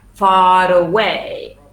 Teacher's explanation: The stress is in way.